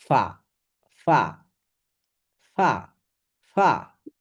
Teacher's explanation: এই যে নিচের ঠোঁট, এটা এটা দেখতে পাচ্ছেন। নিচের ঠোঁট উপরের দাঁতের সঙ্গে স্পর্শ করুন, অথবা অথবা উপরের দাঁত নিচের ঠোঁটের পেটের সাথে লেগে